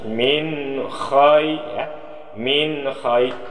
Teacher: Min khay ini izhar. Arti izhar menzahirkan suara nun mati dengan jelas dan terang. Cara bacanya min ini jelas.